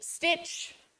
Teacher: that t sound you don't really hear it all the time once it's within the word so for example if I say quickly Stitch I don't hear